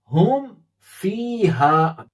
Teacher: ادغام بھی میم کو فا میں ملائیں گے نہیں، ظاہر کر کے سمپل پڑھیں گے اسے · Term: اظہار شفوی